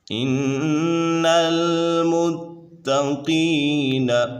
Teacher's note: قاف پر حروف مستعلیہ میں سے تو اسے پر پڑھیں گے